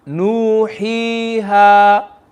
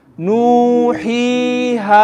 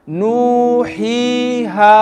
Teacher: One alif long, or you can call it two counts. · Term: maddul asli